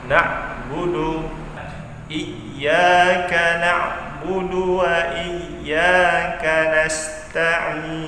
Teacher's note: na'budu ain di tengah tenggorokan ya. Rokatnya keluarnya dari tengah tenggorokan kita